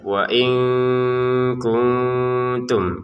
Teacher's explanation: Di sini ada nun sukun ya bertemu kaf ya. Kita baca dengan samar ya.